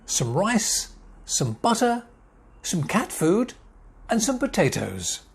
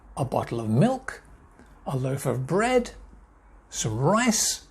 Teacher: my voice went up at the end of each word except on the last one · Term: intonation